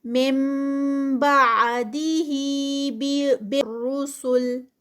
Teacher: मिन बादिही बिर्रुसुल, मिन बादी इक़लाब है, यहाँ पर नून साकिना है और नून साकिना के बाद जब बा आ जाए तो वहाँ पर नून की आवाज़ नहीं आती बल्कि वो आवाज़ जो है वो मीम में चेंज हो जाती है